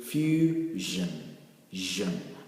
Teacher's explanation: you get the vibration coming from your glottis, from your throat. You can get the vibration that comes when you pronounce or you articulate the sound j.